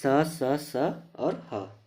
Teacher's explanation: इनका उच्चारण रगड़ या घर्षण से उत्पन्न उष्म यानी कि गर्म वायु से होता है, इसलिए इन्हें उष्म व्यंजन कहते हैं।